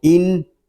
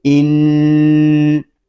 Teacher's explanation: حمزہ نون زیر ان، نون مشدد ہے، اس کو غنے کے ساتھ پڑھیں گے۔ اس کو ان اس طرح نہیں پڑھیں گے، اس کو پڑھیں گے ان۔